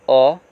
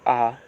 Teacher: ये हो गया आपका अ, 1 मात्रा का समय, ये हो गया आपका आ, 2 मात्रा का समय।